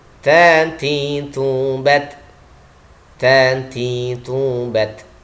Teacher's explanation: ta memiliki sifat suara tertahan, syiddah, atau suaranya kuat.